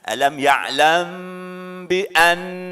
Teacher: Ya, ini ikhfa safawi, maka mim mati ketemu huruf ba harus didengungkan